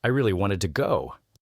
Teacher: The stress on really shows the emotion behind it.